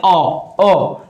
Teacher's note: स्वर का क्या होता है, अ और आ जो होता है, इसका उच्चारण स्थान क्या होता है, कंठ होता है।